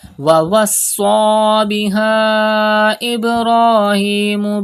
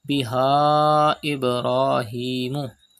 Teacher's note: You can see Hamza after Alif Madda in the next word. It is Madde Munfasil. You have to stretch up to 5 harakat.